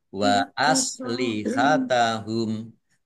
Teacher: mim sukun bertemu dengan huruf wau bacaan izhar syafawi dibaca jelas kemudian humnya dibaca waqa dan pendek karena tidak ada tanda panjang